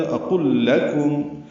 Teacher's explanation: اقل میں حمزہ اقصی حلق سے ادا کریں گے · آگے لام ساکن ہے اور اس کے بعد پھر لام آیا، دونوں لاموں کا ادغام ہو جائے گا ، اقل لکم، یہ ادغام مثلین ہے، لکم میں لام جلدی